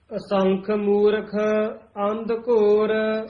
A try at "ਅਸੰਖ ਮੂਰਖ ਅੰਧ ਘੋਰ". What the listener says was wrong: ਅੰਧੇ ਨਾਲ ਨਹੀਂ ਬੋਲਣਾ ਧਦੇ ਨਾਲ ਬੋਲਣਾ